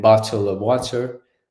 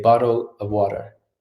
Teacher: in American English generally the T makes a D sound when it comes after a vowel like AE I O U yeah so instead of saying bottle